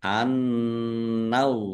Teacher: Annallaha nun tasdid bacaan gunah atau dibaca mendengung ditahan. Annallaha allahnya dibaca tebal karena harakat di depannya fathah